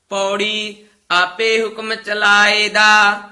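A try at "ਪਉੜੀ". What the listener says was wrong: ਊੜਾ ਨਾ ਪੂਰਾ ਉਚਾਰਨ ਕਰਨਾ ਹੈ। ਪੌੜੀ, ਪੌੜੀ ਨਹੀਂ ਕਹਿ ਦੇਣਾ।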